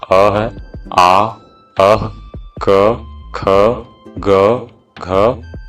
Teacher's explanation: ये सब जो वर्ण है कंठ से उच्चारण होने वाले वर्ण हैं